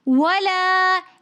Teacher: ولا کے اندر بھی الف مدہ ہونے کی وجہ سے ہم ولا ایک الف کی مقدار کھینچ کر پڑھ رہے ہیں